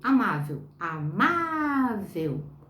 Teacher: amável, amável, má, ela é paroxítona